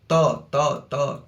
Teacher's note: त शब्द का उच्चारण स्थान क्या है? दंत।